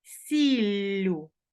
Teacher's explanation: відбувається подовження між двома голосними і закінчення ю